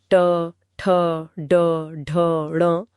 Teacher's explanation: मूर्धन्य ध्वनियां जैसे ट, ठ, ड, ढ, ण। इनको बोलने के लिए जीभ की नोक को तालू के ऊपरी हिस्से जिसे मूर्धा कहते हैं। पर पीछे की ओर मोड़कर लगाना होता है।